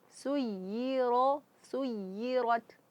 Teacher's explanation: harus ada nabrah yaitu sedikit terangkatnya suara.